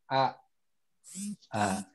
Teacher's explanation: Nah, di H itu ada di tenggorokan bawah, paling bawah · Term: huruf hamzah